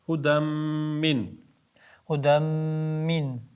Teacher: g'unnalikda albatta bir ikki harakat ushlab turiladi buni.